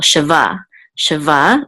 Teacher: and this curly thing right here is the top mark and so we know that the accent is on last syllable